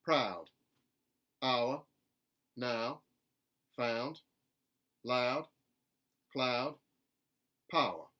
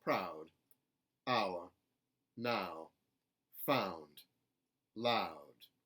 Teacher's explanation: the ow sound collapses a little bit in contemporary Southern.